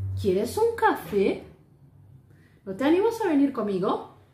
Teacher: La entonación va hacia arriba y termina en lo alto, más alto, la parte más alta.